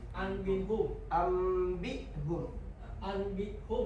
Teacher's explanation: Iklab berarti mengubah. Nun mati atau tanwin yang bertemu huruf ba dibaca berubah menjadi bunyi mim